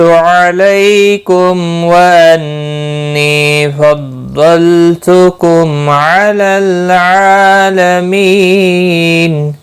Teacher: وقف کی صورت میں نون ساکن پڑا جائے گا، وقف بالاسکان ہوگا، 3 سے 5 الف کے برابر کھینچ کر وقف کریں گے